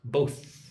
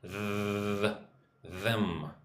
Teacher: With both, you need to lick your top teeth, both. But with them, you need to hum, them.